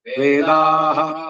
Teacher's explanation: ವಿಸರ್ಗ ಕಳೆದು ವೇದಾಹ ಪೂರ ಕೇಳಿಸಿಕೊಳ್ಳಬೇಕು